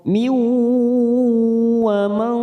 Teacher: nun sukun bertemu waw, idgham bi gunnah, kita tekan 3 ketuk, siap masuk pada huruf waw · nun sukun bertemu shin lagi, ikhfa hakiki, kita samarkan 3 ketuk